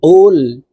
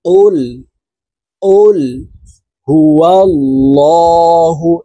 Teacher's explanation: এখানে আমরা অনেকে কুল হুয়াল্লাহু এইভাবে পড়ে থাকি। এখানে অফের উচ্চারণ জিহ্বার গোড়া তার বরাবর উপরের তালুর সঙ্গে লাগাইয়া উচ্চারণ করতে হবে, বলতে হবে এইভাবে, উল, অফ ল্যাম পেশ, উল উল হুয়াল্লাহু।